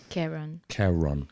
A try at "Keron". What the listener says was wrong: Keron because there's no I. Keron, yeah. Keron. Keron. Keron. Keron. Keron. Yeah. Yes. Keron.